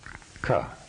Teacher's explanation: which needs a vowel sound like ah to pronounce it consonants the first row of consonants is guttural position one in the throat the hard or unvoiced consonant which is also unaspirated